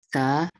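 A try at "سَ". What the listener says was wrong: Desis, tidak perlu berdesis. Sa. Desisnya dikurangi.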